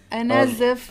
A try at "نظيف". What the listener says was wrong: لا نظيف is clean. نزيف is bleeding. نظيف.